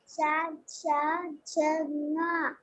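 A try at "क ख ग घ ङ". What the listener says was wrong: I can't hear the letter. Ka, kha, ga, kha, nga. Where is fourth letter? When you are reading, I can't hear the fourth letter. Pronounce it that fourth. Ka, kha, ga, kha, nga.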